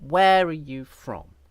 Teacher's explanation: where has the accent where are you from and from is stressed as well